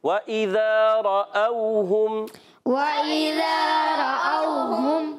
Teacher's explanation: واو لین جو ہوتا ہے نرمی سے پڑھتے ہیں، اس کو کھینچتے نہیں ہیں